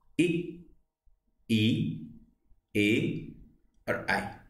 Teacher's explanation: स्वरों को बोलने में जीभ का क्या है? आगे वाला भाग ऊपर उठता है। आप इसे बोल के उच्चारण करके देखिए, सेम ऐसे ही होगा।